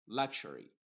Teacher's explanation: la X está formando el sonido K más la SH